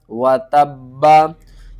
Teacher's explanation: وقف کریں گے تو با کے اوپر جو زبر ہے یہ ختم ہو جائے گی، با ساکن ہوگا تو با کے اوپر قلقلہ کریں گے۔ اس سے پہلے واو ہے، ادغام ہو رہا ہے، تو با کو ہم واو کے ساتھ ملا کر غنے کے ساتھ پڑھیں گے۔